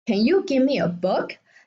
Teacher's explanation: The end of the sentence has a rising tone.